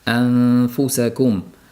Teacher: f ni mahraji tepa tishimiz bilan pastki lab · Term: ixfo